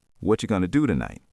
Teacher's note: Do gets the energy. Everything else is soft. That's why fast English sounds like waves.